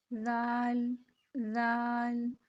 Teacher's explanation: زبان کی نوک اوپر والے دو دانتوں کے کنارے سے لگے گی جا کے، تو وہاں سے ہی ہم زال کو بھی ادا کریں گے۔